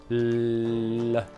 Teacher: Se infatti provi a pronunciare una L, ti accorgi che la parte anteriore della lingua è appoggiata al palato e che l'aria esce ai lati della lingua